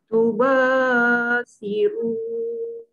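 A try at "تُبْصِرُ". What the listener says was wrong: Okey, tuba. Okey, untuk mad asli, kita jangan lenggok-lenggok. Nanti dia jadi panjang. Tuba. Biar dia straight sikit bunyi dia. Tuba. Kata tuba.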